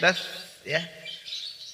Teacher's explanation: sa memiliki sifat ar-rakhawah, yaitu suara dialirkan.